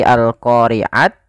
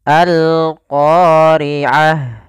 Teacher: ketika kita wakaf ini kita ganti dengan huruf ha yang dimatikan. Maka bukan lagi alqoriat tapi alqoriaah.